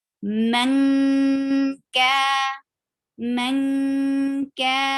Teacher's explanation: Ka will be 2 counts long.